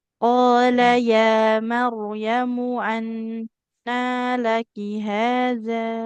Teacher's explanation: Haza, zalnya 2 harokat saja.